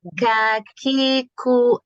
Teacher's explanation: Jadi kalau disukun itu ada keluar sedikit aja tapi nggak usah berlebihan ada ada keluar udara sedikit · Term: sifat hams